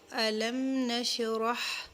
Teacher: را کو پر کریں گے، ہا کو اس کے مخرج سے ادا کریں گے۔ را کو اس لیے کیونکہ را کے اوپر زبر، جس را کے اوپر زبر اور جس را کے اوپر پیش ہو تو اس را کو ہم پر کر کے یعنی ہیوی کر کے پڑھتے ہیں۔